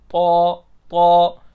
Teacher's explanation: जुबान की नोक ऊपर के अगले दो दांतों की जड़ की तरफ वाले आधे हिस्से से लगती है जब ये त्वा पढ़ते हैं।